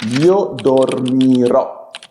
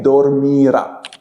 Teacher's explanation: for the first singular person and the third singular person, there will be that change in the pitch accent of the word at the very ending